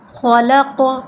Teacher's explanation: اب اس میں خوا اور قاف دونوں حروف مستعلیہ میں سے ہیں تو ہم نے ان دونوں کو پر کرنا ہے۔